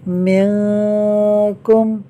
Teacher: نون ساکن کے بعد کاف حروف اخفاء میں سے ہے، لہٰذا اخفاء ہوگا، یعنی نون ساکن میں غنہ ہوگا۔